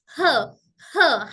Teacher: जब हम हा बोलते हैं या हमजा बोलते हैं, हमारे हलक के निचले हिस्से में वाइब्रेशन होती